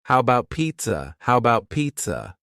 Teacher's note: The first A in the word about is gone. It's just missing. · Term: reduction